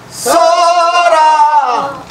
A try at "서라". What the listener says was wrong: 라 라 그렇게 그렇게 그 의미야. 미묘해. 그냥 서라 하면서 그냥 내려오는 것이 아니여. 무자비하게 하지 마. 소리를 섬세하게 해야지. 섬세하게 해야 돼.